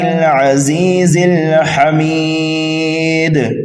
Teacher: دال یہ حروف قلقلہ میں سے بھی ہے تو یہاں پر قلقلہ کبیرہ ہوگا